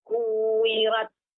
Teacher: Adanya hamas pada huruf ta.